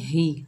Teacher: हा के नीचे जेर है, बगैर खींचे पढ़ेंगे ही, हा जो है सीने से अदा करेंगे